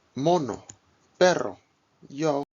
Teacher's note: O, like in hope, but without the glide.